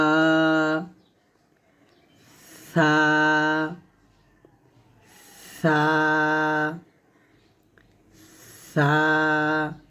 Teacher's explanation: জিহ্বার আগা উপরে দাঁতের আগা লাগিয়ে সা